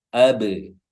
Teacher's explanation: ba-nya sukun dan di sini dia qalqalah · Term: qalqalah sughra